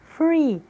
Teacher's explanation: Se pronuncia com som de F, de faca, fada, do português. Free, nós utilizamos os dentes superiores e o lábio inferior